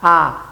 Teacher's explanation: Es central porque la lengua, en el momento de pronunciar la A, la lengua no avanza, no va hacia adelante, tampoco retrocede hacia el velo del paladar. Esta vocal se pronuncia con el solo hecho de abrir la boca, A, nada más. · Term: vocal abierta